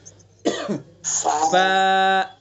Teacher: ثنا اولیاء کا کنارہ, نیچے کے ہونٹ کا تری والا حصہ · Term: فا کا مخرج